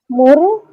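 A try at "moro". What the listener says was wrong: Yes moru.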